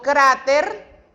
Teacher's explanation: Por ejemplo, yo digo cráter, hago la mayor énfasis de voz en la palabra cra, en la sílaba cra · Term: sílaba tónica